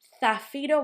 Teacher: Zafiro was that Z at the start, that sounds like th.